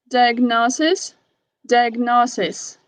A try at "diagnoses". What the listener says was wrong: Diagnoses. It's like a E. Diagnoses. Just make sure you had the long E on the plural form.